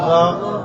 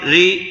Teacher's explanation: جب را کے نیچے زیر آئی تو ہم نے اس کو باریک پڑھا ہے